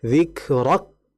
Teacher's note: ditahan dulu baru kemudian dihameskan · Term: sifat hamesnya